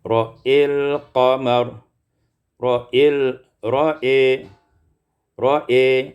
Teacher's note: Kalau wasal seperti hafaz, ra'al qamar. Kalau waqaf, imalatu fathul hamzah, dibaca imalah fathah hamzah, iaitu diimalahkan fathah hamzah menjadi ra'il qamar, ra'il ra'i, ra'i.